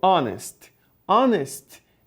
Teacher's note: é uma palavra que começa com o H só que o h é mudo